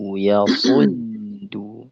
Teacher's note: Usahakan ketika shad dengan dal shadnya tebal dalnya tipis.